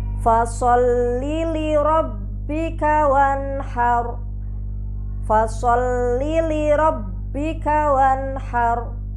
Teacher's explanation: maka ro harus dibaca tebal atau tafkhim